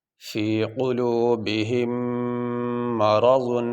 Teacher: اس میم کو اس میم میں داخل کر کے ہم ادا کریں گے، تو ایک ہی میم کو ظاہر کریں گے، اور یہاں پہ غنہ کیا جائے گا، اور غنہ جو ہے وہ ناک میں تھوڑی دیر آواز کو ٹھہرانے کو کہتے ہیں۔